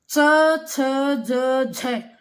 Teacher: हमारी जीवा तालव्य को स्पर्श करती है